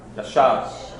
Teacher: You're almost swallowing it. You're rolling the back of the tongue. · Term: resh